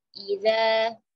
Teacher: ujung lidah bertemu dengan ujung gigi seri atas, panjang dua harokat